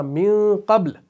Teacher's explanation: اب من قبل میں آپ نون کو چھپا رہے ہیں ناک کے بانسے کے اندر، اخفا کر رہے ہیں